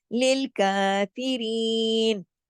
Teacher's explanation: 2 حرکت کھینچ کے پڑھا جائے گا، للکافرین، رین کو بھی، ری بھی 2 حرکت کھینچے گا یا کی وجہ سے